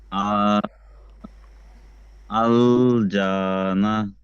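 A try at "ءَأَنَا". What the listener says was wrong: আল যা কোথায়? দুশো আ, একটা টেনে আ, একটা না টেনে আ।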